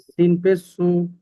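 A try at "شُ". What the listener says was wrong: তিন না, শিন পেশ সু। শিন একটু একটু শক্ত করতে পারলে ভালো হতো, শিন পেশ সু।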